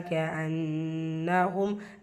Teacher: அன்னஹும் நூன் முஷதா குன்னா செஞ்சு ஓதணும். மீம் சுக்கூனுக்கு அப்புறமா ஹம்சா இதுஹா ஷஹவி உள்ள மாதிரி ஓதணும்.